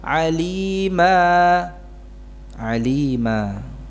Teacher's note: jadi tanwin nasab atau fathatain ini dalam keadaan wakaf diganti menjadi Alif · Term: mad iwad